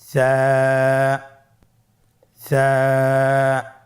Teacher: কোন জায়গা থেকে স্ক্রিনে দেখা যাচ্ছে হারাফটির মাখরাজ হলো উচ্চারণ স্থান জিহ্বার আগা সামনের উপরের দুই দাঁতের আগার সঙ্গে লাগিয়ে উচ্চারিত হয়